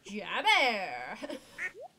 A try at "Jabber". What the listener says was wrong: But you pronounce the J like a Y. Yes. Jabber.